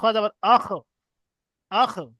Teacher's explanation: খ হলো কন্ঠনলির শেষ ভাগ থেকে উচ্চারিত হয় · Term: খ এর মাখরাজ